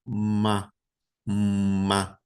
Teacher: E a última letra, que é a letra desse som labial mais nasalizado, é um ma, ma. Vocês veem que tem uma vibração antes de abrir a boca